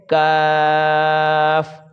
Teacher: یہ زبان کی جڑ اور تالو کے سخت حصہ سے، یہ تالو کا یہ سخت حصہ ہے، یہاں سے یہ کاف ادا کیا جاتا ہے۔